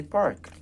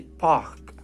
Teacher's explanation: the R sound in British is mute